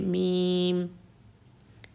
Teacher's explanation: دونوں ہونٹ آپس میں مل جاتے ہیں اور اس کی ساؤنڈ نوز میں چلی جاتی ہے